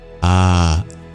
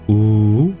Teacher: A is produced at the back of the throat. U is produced by the lips.